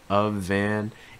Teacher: that f sounds actually going to link with an and also take on a slight voice sound so it's going to sound like a v a van and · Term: linking